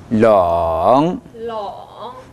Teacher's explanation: 네, 반드시 성대 끓는 소리가 나야 됩니다.